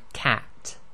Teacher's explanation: with the fata the jaw opens vertically downwards and it's a bit wider than what you would normally do in the English now the sound is the a as in the word cat